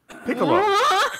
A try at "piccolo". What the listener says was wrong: You don't put emphasis on the second syllable.